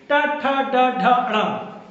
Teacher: तालू के भाग से जीभ हमारी लग रही है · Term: मूर्धन्य